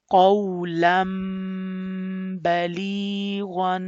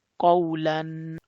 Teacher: you have to change the sound of noon into meme like qawlan balighan. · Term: iqlab